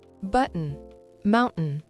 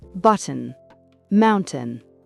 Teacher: En britannique, on bloque l'air dans la gorge. C'est le glotal stop. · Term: glottal stop